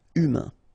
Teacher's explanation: remember, H is not pronounced, A-I-N, un, humain.